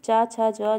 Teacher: चा छा जा का जो उच्चारण स्थान होता है वो तालव्य होता है। तालु की मदद से ये इसका उच्चारण हम करते हैं।